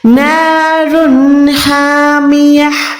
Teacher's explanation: ہا یہ والا حلق کے درمیان سے ہے, یہاں پر آپ نے حلق سے زور دے کے نکالنا ہے, ہڈی سے نکالنا ہے.